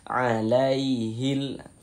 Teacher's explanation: Sebelum ya sukun ada ini, ada harakat fathah, ada tanda baca fathah. Maka huruf ya sukunnya adalah huruf lin. Maka kita baca mudah ya, kita baca lunak ya, lembut.